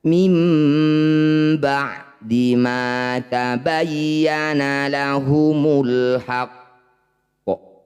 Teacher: bunyi qaf dipantulkan. Tapi sebelum memantul ada jedah, 1 ayunan atau 2 ketukan saja. Jadi pantulannya tertinggal. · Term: qalqalah akbar